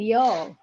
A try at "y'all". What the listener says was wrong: Except it's not y'all. It's y'all. It's just one flat. It's not two words. It's just one fluid word. Y'all. Y-L-L.